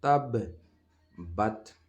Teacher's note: تو اس میں پہلی دفعہ جزم کی طرح پڑھا جاتا ہے، اس لیے با کو میں یہاں پہ قلقلہ کے ساتھ پڑھ رہا ہوں